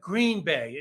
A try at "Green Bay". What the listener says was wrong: It's on the wrong. word. Emphasis on the wrong syllable.